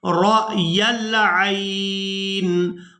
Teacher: را کو حمزہ ساکن کے ساتھ ملائیں گے تو جھٹکے کے ساتھ ادا کریں گے